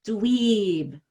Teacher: I put like 4 E's there, right? I want to stretch it out because that vowel is vibrating, and it's going to help me make the B vibrate. Dweeb. And then when we have the E at the end of a word, wow, it's really stretched out.